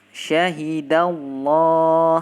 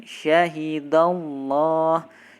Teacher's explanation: sebelum lafzul jalalah Allah huruf dalnya itu harokatnya adalah fathah, maka lafzul jalalah Allah lamnya ditebalkan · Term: lam tebal